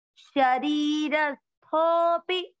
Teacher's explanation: अवग्रह का मतलब आपको अ नहीं बोलना है, थो की मात्रा को लंबा खींचना है